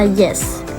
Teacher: Bunyi palatal dihasilkan ketika lidah mendekati langit-langit keras.